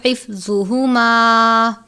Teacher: گول والی ہا ہے، حلق کے آخر سے ادا کرتے ہیں